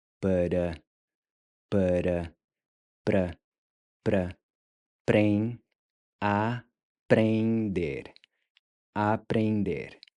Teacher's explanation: So remember that the en is pronounced more like ain. And the r is pronounced more like a soft d, where your tongue just barely taps the ridge right above your front teeth